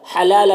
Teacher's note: لام کے اوپر کھڑا زبر ایک الف کے برابر کھینچیں گے اور یہ لام کی میں جو تنوین ہے اس میں اخفا ہو رہا ہے، تنوین کی آواز کو ناک میں چھپا کر پڑھیں گے.